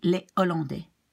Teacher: you do not pronounce the H, but you do not link the preceding S